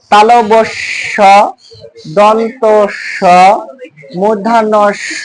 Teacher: এই চারটা ধ্বনি উচ্চারণ করার সময় বাতাস শিষ দেওয়ার মত আওয়াজ করে বের আসতেছে